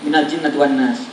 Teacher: Gunnah itu di hidung. Minal jin, 2 harokat minimal.